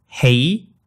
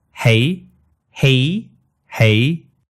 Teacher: vowels are the same in both cases but at the end the Cantonese diphthong goes all the way up to e where the English one stops at a